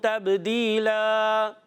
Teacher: کی صورت میں، اور تبدیلا، تا کو با سے ملائیں گے، با ساکن ہے، قلقلہ ہوگا، آواز لوٹ کر آئیے